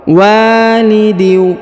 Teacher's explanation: karena di depan huruf waw terdapat alif, ya, maka kita panjangkan 2 harokat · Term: panjang 2 harokat